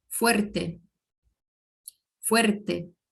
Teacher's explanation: e ele não está seguido de vogal, no meio da palavra, ele vibra, mas vibra um pouco menos